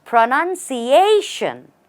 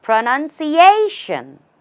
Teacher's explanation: The stress is right here, on the A before shun.